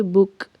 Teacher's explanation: با اور کاف کو ملاتے ہوئے ہمس سانس جاری رہنی چاہیے